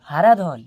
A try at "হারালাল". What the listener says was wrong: হারাধন নয় স্যার, হারালাল, হারালাল। আবার ধন ধরছেন, ধন ছাড়ুন, ধনটা কেটে লাল করুন।